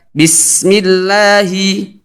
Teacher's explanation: ada suara desis dari huruf sin, sifat sofir